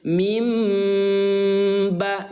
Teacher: Atau secara sederhana mengganti suara N menjadi suara M. Artinya tadi dibaca N min ba, sekarang berubah menjadi mim ba atau dibaca M. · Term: iqlab